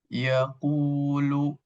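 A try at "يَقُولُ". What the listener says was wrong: Tebalkan lagi. Jadi nanti ditebalkan ya. Ada kaidah kullul isti'la mufakhamah. Jadi setiap huruf isti'la ini ditebalkan. Nah, ko ini bagian daripada huruf isti'la. Taqu, tu ditebalkan.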